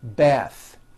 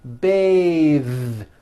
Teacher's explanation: when you change it into a verb, to bathe, the vowel changes to an A sound and the TH is voiced. Bathe, like in bathing suit.